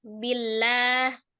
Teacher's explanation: Sebelumnya ada harokat kasrah maka dibaca tipis ya. Tarqiq billah.